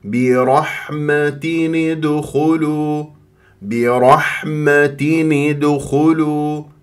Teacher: تنوين كسر جاء بعد همزه ادخلوا راح يكون عندي اظهار